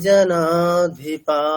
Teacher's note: আকারটাকে দীর্ঘ উচ্চারণ করেই তারপরে বিসর্গ বলতে হবে এইরকম জনাধিপ আকারটাকে টাকে দীর্ঘ করতে হবে হকারটাকে না মানে যদিও